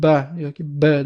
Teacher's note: pastki va tepa lablarimiz bir-biriga tegib turadi. Ya'ni tilimiz esa qatnashmaydi.